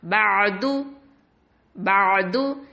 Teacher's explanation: தொண்டை கொஞ்சம் அழுத்தமாக ஆழமாக நம்ம உச்சரிக்கணும். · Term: ஐன்